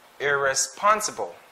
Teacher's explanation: so the stress is in the third syllable which is pun irresponsible right take note of that this word